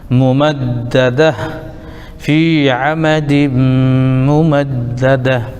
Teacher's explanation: یہ گولتا آیت کی وجہ سے ساکن ہو جائے گا، ہائے ساکن